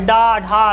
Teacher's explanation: आप डा ढा बोलेंगे तो झटका लगे, डा ढा तुरंत जीभ में मोड़ के झटके के साथ बोला जाता है